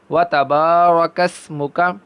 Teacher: را کو پر پڑھیں گے کیونکہ ہم قاعدہ پڑھ چکے ہیں را کے اوپر زبر ہو تو اس کو پر پڑھتے ہیں